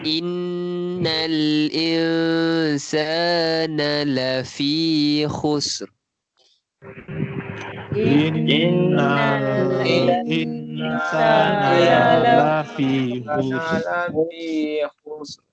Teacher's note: Innal insana tak panjang. Na satu harakat. Sa tu yang panjang.